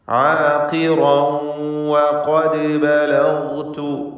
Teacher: ആഖിറൻ വഖദ് ബലഗ്തു, വാവ് 2 ചുണ്ടിൽ നിന്ന് തന്നെ ഉച്ചരിക്കുക. ചുണ്ടുകൾ വൃത്താകൃതിയിലാകും വാവിൻ്റെ ഉച്ചാരണ സമയത്ത് എന്നത് ശ്രദ്ധിക്കുക. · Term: വാവിൻ്റെ മഖ്റജ്